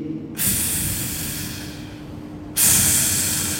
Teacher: Ujung gigi seri atas ditempelkan ke bibir bahagian bawah. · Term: fa